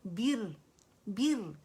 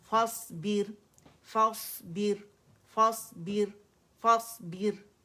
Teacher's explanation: بر کر کے نہیں پڑھیں گے، باریک پڑھیں گے، ٹھیک ہے، کیونکہ را سکون سے پہلے ہمارے پاس کسرہ آ رہی ہے